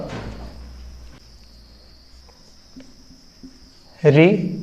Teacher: मूर्धन्य इसका उच्चारण स्थान हो गया, मूर्धा इसका उच्चारण स्थान हो गया।